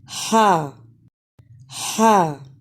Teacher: हा की अदा में अक्सा हलक यानी हलक का जो हिस्सा सीने के साथ मिला हुआ है वहां से अदा होता है